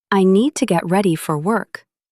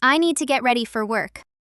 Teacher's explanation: The strongest ideas are need, ready, and work. You do not need to make every small word heavy.